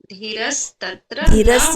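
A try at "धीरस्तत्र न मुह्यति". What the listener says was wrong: नहीं है लंबा कीजिए धी धी कीजिए लंबा कीजिए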